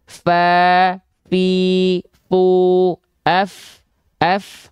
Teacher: Ujung gigi seri atas kita sentuhkan dengan badan atau perut bibir bawah. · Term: huruf fa